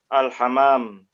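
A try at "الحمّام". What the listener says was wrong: Al-hammam. Yahruju. Bitasydid Pak. Al-hammam. Bitasydid hammam artinya kamar mandi, tanpa tasydid artinya apa?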